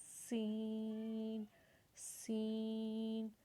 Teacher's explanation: سین کی آواز کو تھوڑا سیٹی کی طرح نکالنا ہے، اپنے دونوں دانتوں کے درمیان سے اس کی آواز کو نکالنا ہے